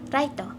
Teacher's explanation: a hard time hearing and producing english r and l correctly as example the word right and light they both pronounce as raito